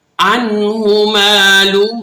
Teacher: الٹا پیش جو ہے سیدھے پیش کی بنسبت تھوڑا سا کھینچ کر پڑھتے ہیں، یعنی 1 الف کے برابر۔